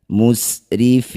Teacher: Mad tabi'i bertemu huruf hidup kemudian dihentikan, jadilah bacaan mad arid lis sukun. Fi panjangkan 6 harokat, huruf terakhir sukunkan.